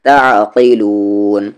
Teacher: عین کو بیچ والے حلق سے بولے